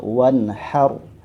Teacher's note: fathah pada huruf H itu yang membuat ro-nya menjadi tebal.